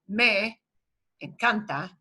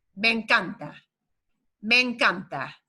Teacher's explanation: the e at the end of me and the e at the start of encanta blend together with just a longer e sound